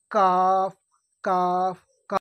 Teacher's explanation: এই কাফ, কাফের উচ্চারণ মাখরাজ হচ্ছে জিবের গোড়া থেকে একটু আগে, মানে যেখান থেকে কফ উচ্চারণ হচ্ছিল তার একটু আগে থেকে, জিবের গোড়া থেকে একটু আগে এবং তার বরাবর উপরে তালুর সাথে লাগিয়ে উচ্চারণ হয়